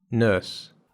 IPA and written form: nɜːs (nurse)